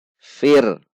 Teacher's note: Ra sukun sebelumnya kasrah maka dibaca tipis. Fir. Bukan fir.